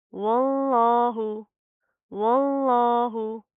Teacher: लफ्ज़ अल्लाह को मोटा पढ़ेंगे, क्यों? क्योंकि उसके माकबल क्या है, वाव के ऊपर ज़बर आ रही है, ठीक है। तो लफ्ज़ अल्लाह मोटा पढ़ा जाएगा, इसको आपने ब्रेक नहीं करना, इस चीज़ का आपने ख्याल करना है।